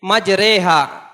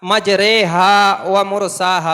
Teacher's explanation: زیر کو مجہول پڑھ کے پڑھیں گے، جیسے قطرے سویرے ہمارے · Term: امالہ